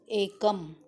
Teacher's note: एकममध्ये हा शेवटी जो म आहे तो अर्धव्यंजन आहे, म्हणजे त्याला म हलंत्य म्हणतात. एकम या मचं उच्चारण म असा पूर्ण न करता एकम अर्ध उच्चारण पाहिजे.